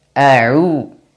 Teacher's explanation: A'u, ain jelaskan, dan dia berharokat dhammah, maka monyongkan mulut. Makhrajnya tempat keluarnya dari tengah tenggorokan, wasatul halq. Dan dipanjangkan dua harokat karena ada waw sukun setelahnya.